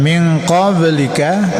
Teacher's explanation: min qablika ini qalqalah kecil. Ini pantulkan sekedar saja.